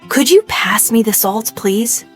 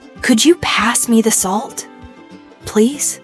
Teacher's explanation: Listen to how my voice kind of rises on could you, and then falls gently at the very end.